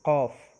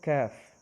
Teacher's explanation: قاف حلق سے ادا ہوتا ہے قاف، اور ایک ہوتا ہے کاف، کاف منہ کے خالی حصے سے ادا ہوتا ہے